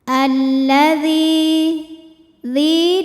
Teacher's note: maka huruf Dal kita panjangkan dua harakat · Karena ada ya sukun yang sebelumnya didahului baris kasroh, maka huruf dzal kita panjangkan 2 harokat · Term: Mad Thobi'i, mad tabi'i dhahiri